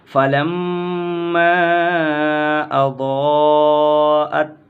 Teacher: غنہ کریں گے، نون اور میم پر تشدید ہو تو غنہ ہوگا۔